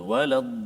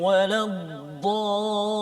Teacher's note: Banyak yang kadang-kadang pembaca kita baca pada kalimah ad-dallin ni sabdu pada lam tu hilang, waladdallin terus masuk lin. Sabdu pada lam tu waladdallin, tu peding dia ataupun kita pegang tahan sekejap